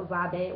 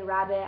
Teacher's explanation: kids will say rabbit as a wabbit with a W instead of an R.